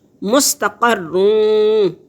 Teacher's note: مستقرون، 2 حرکت کے برابر ناک میں آواز کو چھپائیں گے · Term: ادغام کے ساتھ غنہ